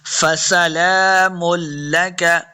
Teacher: سین پہ سیٹی کی آواز آئے گی، لام کے اوپر کھڑی زبر ہے اور یہ بات یاد رکھنی ہے کہ یہ لام ہے، حمزہ نہیں ہے.